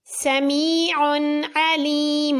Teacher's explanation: عین کے اوپر 2 پیش، اس کے بعد عین حروف حلقی میں سے ہے، اظہار۔